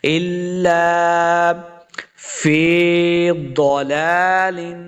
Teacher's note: ضاد کو موٹا پڑھنا ہے، ضاد کو موٹا پڑھیں گے، ضاد حروف مستعلیہ سے ہے، پر پڑھیں گے · حمزہ کو لام کے ساتھ ملا کے پڑھیں گے، لام کے آگے الف ہے، اس کو 2 حرکات لمع کرنا ہے · لمع بالکل نہیں کرنا ضاد کو، لام کے اوپر کھڑی زبر ہے، اس کو 2 حرکات لمع کریں گے۔ اس زیر کی تنوین کے بعد کاف حروف اخفا سے ہے تو یہاں پہ بھی ہم نے اخفا یعنی غنہ کر کے پڑھنا ہے۔